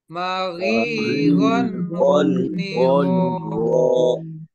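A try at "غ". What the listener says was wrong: Di sini masih ada sebenarnya yang memajukan bibir. Jadi uwa tidak. Kita tidak memajukan bibir di sini ketika fathah. biasa saja dibuka. Go, go.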